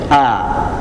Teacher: Hamzahnya keluarnya dari tenggorokan bagian bawah, rongga tenggorokan tapi bagian bawah